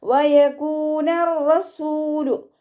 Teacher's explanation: 2 അക്ഷരങ്ങൾ ഉച്ചരിക്കുന്ന കനം കൊടുക്കണം, പക്ഷെ മണിക്കാതെ ഓതിക്കൊടുക്കണം കേട്ടോ. വയകൂനർ റസൂലു എന്ന് പറഞ്ഞിട്ട് മണിച്ചു ഓതരുത്. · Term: റോ ശ്രദ്ധ